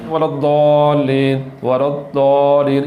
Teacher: ضاد کے لیے بہت زیادہ پریکٹس کرنے کی ضرورت ہے، کیونکہ ضاد کا مخرج زبان کی کروٹ اور اوپر والے دانوں کی جڑ ہے ، تو اس کے لیے بار بار پریکٹس کرنی چاہیے، اس